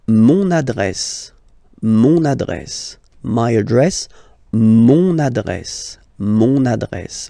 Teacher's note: you can hear now this little link, so you get to pronounce this N